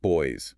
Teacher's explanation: A B is a bilabial sound, meaning it requires both lips.